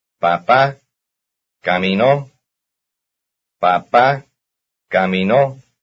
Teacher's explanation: Notice that it is the last syllable which has the stress.